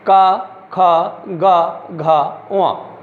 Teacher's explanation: इनको हम कंठ से बोलते हैं, इसलिए इनका उच्चारण स्थल कंठ है